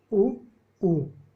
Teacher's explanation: इनका उच्चारण स्थान होता है ओष्ठ, यानी होठ